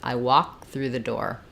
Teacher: I say the K it breaks it up too much so we use an unreleased K here